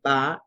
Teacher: Primero con B, bilabial sonora